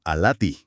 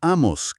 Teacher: Es una vocal abierta clarita.